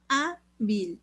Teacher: Se acentúa la A, es la penúltima sílaba y como termina en L, sí se le pone tilde.